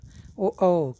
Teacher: कंठ और ओष्ठ दोनों से बोला जाता है, इसलिए ओ का उच्चारण कंठ और ओष्ठ होता है, इसलिए कंठोष्ठ कहा जाता है। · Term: कंठ्योष्ठ